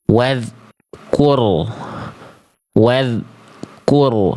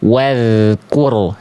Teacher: Jadi bunyi antara z dengan ku tidak boleh ada jedah